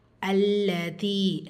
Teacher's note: லாமில் ஷத்தா இருக்குது, அழுத்தம் கொடுத்து ஓதணும் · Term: லாம் ஷத்தா